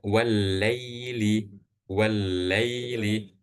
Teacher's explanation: Alifnya enggak dibaca dan lam-nya juga enggak dibaca.